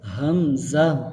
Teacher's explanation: حمزہ کے شروع میں بھی ہا کی آواز آئے گی اور اینڈ پہ بھی ہا کی آواز آئے گی